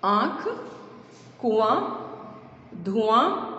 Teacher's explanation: नाक से, नासिका यानी कि नाक से जब वायु यानी कि हवा निकलती है तो इन मात्राओं का उच्चारण होता है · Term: चंद्र बिंदु